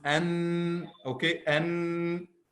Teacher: the tip of the tongue moves up, okay, touches the roof of the mouth, and then again the sound of غنة goes from our nose with the meme.